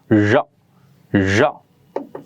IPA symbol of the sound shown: ʒ